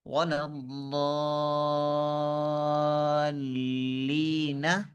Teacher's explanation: یہ جو بڑی مد ہے اس کی کم سے کم مقدار 3 الف ہے، زیادہ سے زیادہ 7، اور جو قرات کرنے والے ہوں وہ اپنی آواز کے مطابق، اپنی سہولت کے مطابق اس سے بھی اوپر جاتے ہیں۔